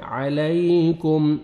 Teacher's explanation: عَلَيْكُمْ, میم ساکن کا اظہار ہے, کاف کو باریک پڑھیں گے, اور میم ساکن کا اظہار ہے, جلدی پڑھیں گے. عَلَيْكُمْ ہا کو اپنے سے مخرج سے ادا کر کے 1 سیکنڈ کھینچنا ہے, کھڑا زبر ہے.